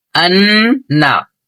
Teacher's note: اور ایک بات آپ نے جانی کہ اگر نون اور میم پر اگر تشدید ہو تو غنہ ہوگا، اور غنہ کسے کہتے ہیں؟ ناک میں تھوڑی دیر آواز کو روکنا